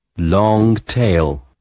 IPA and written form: lɒŋ teɪl (long tail)